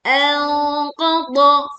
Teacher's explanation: tebalkan bunyi dengung atau saat kita menyamarkan nun sukun bertemu dengan qaf dengan suara yang tebal